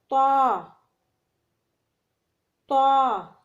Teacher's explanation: طا کو زبان کی نوک اور ثنائے علیہ کی جڑ سے ادا کیا جاتا ہے